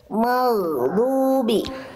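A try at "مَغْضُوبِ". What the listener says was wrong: Oke, sip.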